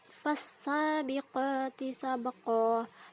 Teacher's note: qalqalah sugroh, yaitu memantulkan suara kecil di tengah kalimat